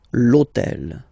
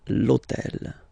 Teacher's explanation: All right, and third example, so I took on purpose this hôtel, okay, because it starts with H, but remember that in French we don't pronounce H, okay, so basically the first sound of the word is the vowel O